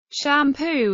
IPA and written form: ʃæmˈpuː (Shampoo)